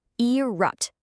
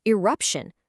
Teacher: the T is gone, and we have a sh in its place.